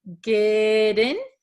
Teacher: So this T becomes a flap T. So it sounds like a D.